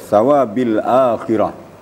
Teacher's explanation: Mat badalnya terlalu panjang tadi sampai satu setengah Alif